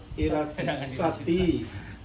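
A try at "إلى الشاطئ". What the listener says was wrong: Syanya panjang. Sanya panjang. Syati'i. ila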